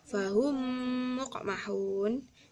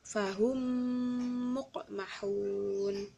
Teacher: dibaca dengung ya, selama 1 alif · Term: idgham mimi